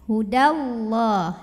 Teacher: Kalau wasol, dalnya enggak punya mad, jadi pendek ya. Hudallah, langsung tekan. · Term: takhallus bil hadfi